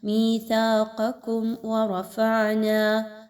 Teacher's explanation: راء کے اوپر زبر، اس راء کو پر پڑھا جائے گا